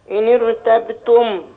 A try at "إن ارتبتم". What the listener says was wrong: لا لسه لم تفخم بس محتاجة